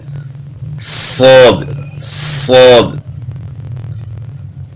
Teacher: سین کو ہم موٹا کریں گے تو صاد کی آواز بن جاتی ہے